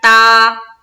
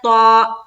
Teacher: کوئی پڑھے محیط, تو یہ ہو گیا تا, کون سا, 2 نقطے والی تا ہو گیا جو با کے بعد ہوتا ہے, ٹھیک ہے. تا کو یعنی کہ با کے بعد جو تا آتا ہے اس کو ہم باریک پڑھتے ہیں, لیکن اس طا کو ہم موٹا کر کے پڑھتے ہیں